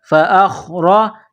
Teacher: را کے اوپر زبر ہے تو را کو موٹا کرنا ہے